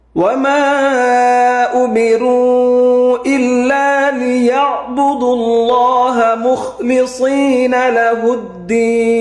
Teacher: এই আইন হরফটা গলার মাঝখানে চাপ দিতে হবে